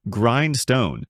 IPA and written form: ˈɡraɪnd.stoʊn (Grindstone)